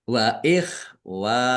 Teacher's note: Wau fathah alif mad thobi'i panjang dua harakat. Kemudian himnya waqaf dan dibaca pendek karena tidak ada tanda panjangnya.